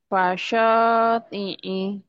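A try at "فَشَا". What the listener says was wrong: Fasya, huruf A bukan huruf O.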